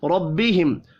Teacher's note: را یہاں بھی زبر کی وجہ سے پر پڑھیں گے. میم ساکن کے بعد واو ہے، اظہار شفی ہوگا، غنہ نہیں ہوگا.